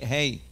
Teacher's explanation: Sometimes we pronounce the heys too hard because we're used to the real strong H sound. But in Hebrew, like in Spanish, the H sound, the hey, is not pronounced too strong